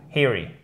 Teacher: Il y a deux E, mais attention, c'est un i court. Eerie, avec l'accent tonique sur la première syllabe